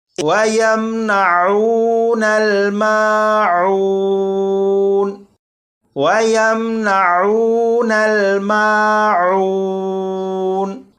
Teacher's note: اب اس آخری آیت کو پڑھیں گے، یہاں پر آپ دیکھیں یہ میم ساکن ہے، اس میم ساکن میں غنہ نہیں کریں گے۔